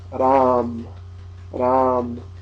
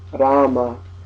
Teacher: But in the north of India, they just say Ram, Ram. In the south of India, they say the full original Sanskrit pronunciation, Rama.